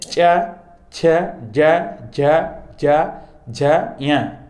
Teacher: जिनका उच्चारण तालु से हो तालव वर्ण कहलाते हैं। इन वर्णों को बोलने में जीभ तालु को स्पर्श करती है